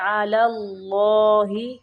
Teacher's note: اللہ کا لام موٹا پڑھیں گے